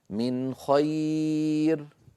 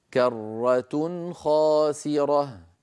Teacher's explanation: مثال الحرف السادس والأخير من حروف الإظهار من خير. من خير، نون ساكنة بعدها خاء لم أزد في زمن النون